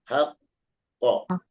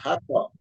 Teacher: Maka cara wakafnya ditasdidkan dulu baru wakaf.